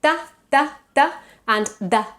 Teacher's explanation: The tip of our tongue is touching the teeth. · In Spanish and Catalan, we pronounce them dental.